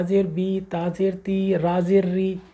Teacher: ہلکا سا یا کی طرف رجحان کا پڑھیں